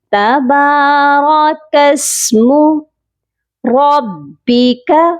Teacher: را کو موٹا کریں گے اور با کے ساتھ ملا کر بھی پڑھیں گے · کاف کو سین کے ساتھ ملائیں گے، درمیان میں خالی الف نہیں پڑھا جائے گا